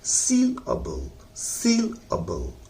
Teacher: सील पर जोर लगाइए और अबल को हल्का पढ़िए